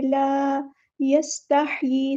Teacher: ان اللہ لا یستحیی، الف مد آ گیا ہے تو ایک الف کے برابر لمبا کریں گے۔ لا یستحیی، سین میں سیٹی واضح کریں گے، ہاں کو مستحرک یعنی مڈل تھروٹ سے ادا کریں گے۔ یہاں پر ہمیں یا کھڑی زیر ی آواز نکالنی ہے، ای کی آواز نہیں نکالنی، ٹھیک ہے؟